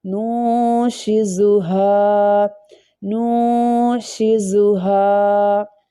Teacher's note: یہ جو ہا ہے موٹی ہا ہے، lower part of the throat سے ہا پروناؤنس ہوتی ہے، اس لیے اس کا ساؤنڈ تھوڑا ہاریبل ساؤنڈ لائک اس طرح کا ساؤنڈ ہوگا.